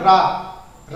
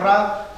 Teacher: जीभ ऊपर जाती है, मूर्धा को टच करती है, फिर बेलन की तरह आपका जो है गोल मुड़ती है, तब जाके रा का उच्चारण होता है। ठीक है, जीभ जाकर मूर्धा को टच करती है, फिर बेलन की तरह गोल घूमती है, तब जाके जो है रा साउंड क्रिएट होती है, रा का जो है उच्चारण होता है। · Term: लुंठित